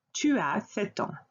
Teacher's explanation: And again, notice here I do not pronounce the S.